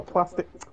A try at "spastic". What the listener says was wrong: Spastic, not plastic.